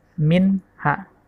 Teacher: nun sukun bertemu dengan huruf ha. Cara membacanya jelas, min ha, tidak didengungkan.